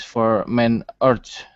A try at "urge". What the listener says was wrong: Pronunciation. It sounded like art. Urge.